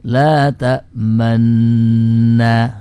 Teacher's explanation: Nah, cara mengucapkannya yaitu cara mengucapkannya ismam pada la ta'manna ini mengisyaratkan harokat dhammah setelah sukun